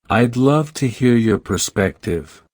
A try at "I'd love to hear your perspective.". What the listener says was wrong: No. You sound like you are begging for their time. Drop the voice. Finality.